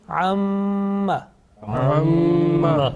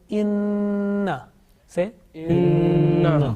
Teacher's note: this time gunna means continuous nasal sound for about two seconds sustained continuous nasal sound for about two seconds in pronunciation and it is produced from nose pipe